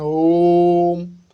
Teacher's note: प्लुत स्वर है, इसमें 3 मात्रा का समय लगता है